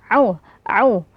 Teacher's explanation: huruf Ain sama seperti tadi keluar dari tengah tenggorokan